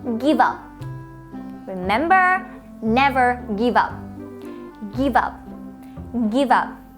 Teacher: The V sound at the end of the word give. We link it to the sound of the word up. So we have give up.